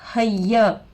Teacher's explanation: हा पर ज़बर की हरकत है, जल्द पढ़ेंगे। या पर तशदीद आकर है, 2 मरतबा पढ़ेंगे, एक पिछले वाले हरफ से एक खुद से। या पर ज़बर की हरकत है, जल्द पढ़ेंगे।